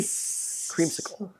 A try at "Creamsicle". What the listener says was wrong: You're putting emphasis on sickle.